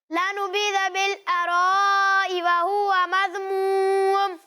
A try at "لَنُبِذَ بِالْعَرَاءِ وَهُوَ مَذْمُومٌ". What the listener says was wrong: انہوں نے زال میں کلکلا کی طرح آپ نے ادائیگی کی. یہ دوسرے والے زال کی. مذ آپ نے اس طرح پڑھا، مذموم، تو اس طرح نہیں.